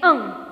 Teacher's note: અંગ બોલો છો ને ત્યારે અહીંયા ગળાને ભારણ થાય છે, ગળામાં થોડું ઘર્ષણ થાય છે હવાનું. સાથે સાથે હવા છે મુખ અને નાક બંનેમાંથી બહાર નીકળે છે. એટલા માટે એને અનુનાસિક કંઠ્ય વર્ગનો, ક વર્ગનો કંઠ્ય ઉચ્ચારણ સ્થાનથી હવા બહાર નીકળે છે મુખ અને નાકમાંથી, એટલે એ અનુનાસિક છે.